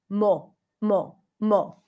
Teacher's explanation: I'm gonna say it with a pure o I'll deliberately mispronounce it